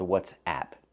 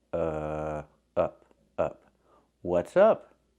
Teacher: use the short uh sound like cup and up it's more closed and relaxed